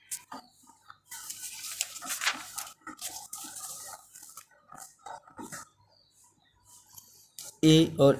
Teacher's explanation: इनका उच्चारण स्थान होता है कंठ तालव्य